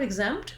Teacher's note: So you can attempt to put both sounds in, or if that's giving you a lot of trouble to make that cluster at the end, go right from the M to the T, just be short on your M. In the word exempt, we actually do say that T sound, we release it. Unlike a lot of words that end with the T, like hat or cat, I don't have to release that T, and often Americans will use a stop T there.